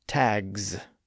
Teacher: the G sound is pronounced with the vocal cords activated. So that voicing carries over and converts the S into a Z sound.